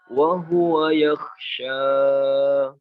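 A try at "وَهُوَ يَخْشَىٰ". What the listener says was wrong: Dua harokatnya jangan kepanjangan. Wa huwa yakhsha. Dua harokat aja.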